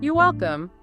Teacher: friendly, clear, falling intonation.